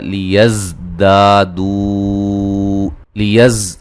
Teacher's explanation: ज़ा को सीटी से अदा करेंगे। दा अलिफ मद्दा है।